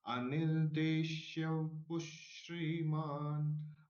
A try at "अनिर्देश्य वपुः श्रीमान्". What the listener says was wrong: हाँ, अनिर्देश्य वपुष, वपु अलग से बोलिए, इसलिए इससे व पूर्ण हो जाएगा। जहाँ पर मात्रा नहीं दिखती है ना, उसको हम आधा पढ़ते हैं, ये गड़बड़ हो जाती है। मात्रा नहीं है लेकिन वहां पर स्वर तो है, अस्वर है, अस्वर को मात्रा होती नहीं है।